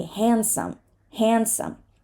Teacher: Because it's a consonant cluster, and that is what we do in consonant clusters. We often drop the middle sound to make it easier to pronounce. So it's such a common thing to drop this D that it's become the norm.